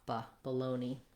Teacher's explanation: the letter A just says a schwa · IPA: /bəˈloʊni/